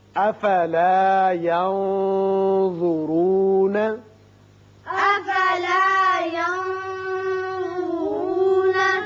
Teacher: یہاں نون پر اخفا کیجئے اور را پر پڑھیں گے